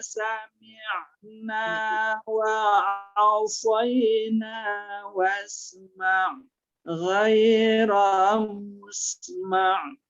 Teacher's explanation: kita larikan dia ke tengah tenggorokan karena makhrajnya ain itu ada di tengah tenggorokan.